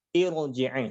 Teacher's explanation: Sekalipun dibacanya jadi kasrah, maka ra-nya tetap tebal karena dipengaruhi oleh hamzah wasal.